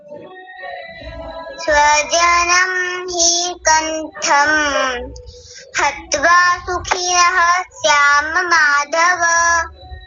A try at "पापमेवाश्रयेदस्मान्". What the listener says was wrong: सबसे पहले आपने ये वाला न जो है ये पूरा कर दिया था। पापमेवाश्रये दस्मान, दस्मान, बस इतना बोलना है। बोलिए, पापमेवाश्रये दस्मान।